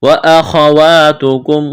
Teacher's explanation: خا کو موٹا کرنا ہے، بغیر کھینچ کے پڑھیں گے